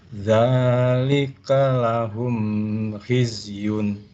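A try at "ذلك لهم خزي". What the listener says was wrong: Pas.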